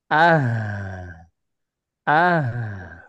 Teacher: huruf h huruf ha itu punya sifat Hames juga punya sifat rakwa